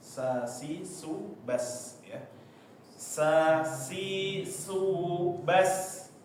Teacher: Tiga huruf ini mempunyai sifat safid, yaitu tajam ketika diucapkan.